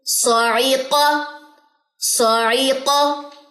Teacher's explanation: سواد موٹا ہے, قاف اتنا موٹا نہیں ہوگا. قاف موٹا تو ہوگا کیونکہ اس میں استعلاء کی صفت ہے, لیکن اتباق نہیں ہے اس میں, ٹھیک ہے. صرف وہ سواد کے اندر ہے.